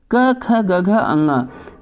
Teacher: क वर्ग का जो मतलब अक्षर हैं उनका जो उच्चारित स्थान है वो होगा दोस्तों कंठ